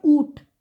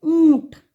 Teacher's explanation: तो चंद्र बिंदु हम नज़ल साउंड या अनुनासिक इसीलिए कहते हैं. थोड़ा नज़ल साउंड होता है जहाँ थोड़ा नाक से बोलते हैं, उसलिए हम चंद्र बिंदु लगाते हैं.